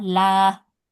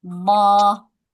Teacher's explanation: dibaca tipisnya seperti huruf lam biasa